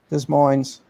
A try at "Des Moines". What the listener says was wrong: Des Moines. The S is silent on it's like your dfox. It's like that. Des Moines.